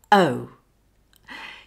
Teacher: A diphthong is a quick, smooth glide from one vowel sound to another, and the whole glide acts as one syllable. The tongue moves from a relaxed, neutral position for a to an upward and backward position for u. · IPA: əʊ